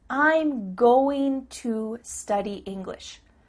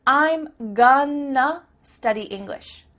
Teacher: I'm gonna study English means I'm going to study English. That word to simply becomes a.